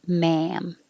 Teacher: the vowel is ah, so you have to open a lot